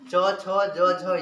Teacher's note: च का उच्चारण स्थान तालु, छ का तालु, च छ ज का तालु, सब का।